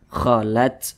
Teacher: huruf ta ini dia memiliki sifat hamas. Nah, jadi ketika membunyikannya itu ada desisan angin yang berhembus yang keluar daripada mulut kita.